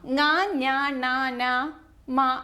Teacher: ങ്ങ ഞ ണ ന മ എന്ന് പറയുമ്പോൾ മൂക്ക് കൊണ്ടാണല്ലേ ഉച്ചരിക്കുന്നത് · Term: അനുനാസികം